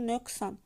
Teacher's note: əgər q hərfindən sonra adətən kar samit gələndə q da karlaşır. Yəni özündən sonra gələn samitdən asılıdır.